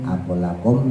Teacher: Ba ketemu ba, ta ketemu ta, jadi lamnya itu langsung diidghamkan, langsung dimasukkan kepada huruf lam berikutnya. Jadi seakan-akan karena di situ sudah ditasdid ya, jadi lam yang pertama yang pada lafaz akul itu udah nggak dianggap ya, langsung aja masukin ke tasdid lam yang kedua lakum itu. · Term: idgham mislim